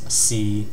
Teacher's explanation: a mid flat pitch tone and it's unique to Cantonese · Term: third tone